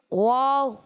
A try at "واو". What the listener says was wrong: واو, یہ بھی دیکھیں مد ہے نا. واو